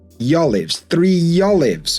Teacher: So this is smile vowels where we add in this y